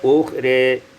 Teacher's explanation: Pada ayat yang ke-68, ukhra, imalatu fathatir ra, imalatu fathatir ra, diimalahkan fathah ra menjadi ukhri